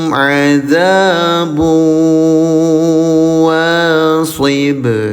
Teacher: Memasukkan, karena idgham ya. Didengungkan selama 2 harokat.